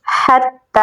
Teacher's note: یہاں پر ہا کو گلے کے درمیان والے حصے سے نکالیں گے اور تا کے ساتھ ملائیں گے کیونکہ تا کے اوپر تشدید ہے اور یہاں پر کھڑی زبر ہے تو اسے ہم لمبا بھی پڑھیں گے حتی.